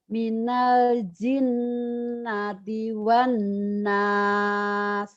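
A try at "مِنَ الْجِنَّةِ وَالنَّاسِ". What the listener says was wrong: Cuman baca Ibu tuh seperti orang yang tidak yakin dengan hidupnya gitu ya. Dengan masa depannya. Jadi bacaannya itu kosong gitu. Kayak memandang tapi pandangannya itu kosong gitu.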